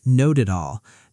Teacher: Not at all often sounds like one smooth piece, almost noted all. That's called linking, when the end of one word connects straight into the next.